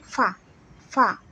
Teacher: মানে ফা, এটা অ্যাকচুয়ালি সাউন্ডটা হলো মানে উপরের দাঁত নিচের ঠোঁটের সাথে লেগে যাবে